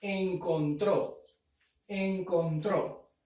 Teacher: La mayor fuerza de voz está en la última sílaba. Encontró. Y está tildada. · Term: palabra aguda